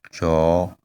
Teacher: first of all the tone is low, and then after it is high